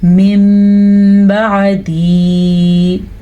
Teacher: نون ساکن کے بعد با آ جائے یا تنوین کے بعد با آ جائے تو نون ساکن اور تنوین کے اوپر یہ چھوٹا سا میم پیدا ہوتا ہے تو نون ساکن اور تنوین کے بجائے میم پڑھا جاتا ہے اور غنے کے ساتھ پڑھا جاتا ہے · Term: اقلاب